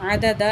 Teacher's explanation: تو یہاں 2 زبر ہیں دال کے اوپر، وقف کریں گے تو عددا، یعنی کہ 1 زبر رہ جائے گی، ٹھیک ہے. وقف کے بغیر عددن، ٹھیک ہے.